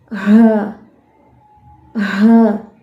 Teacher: سینے سے سانس اور آواز دونوں آ رہی ہیں، ہمس اس میں موجود ہے